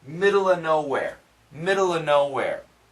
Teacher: But if you listen carefully, there's no V sound